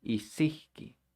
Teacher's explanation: a W at the end of the syllable is going to sound like an H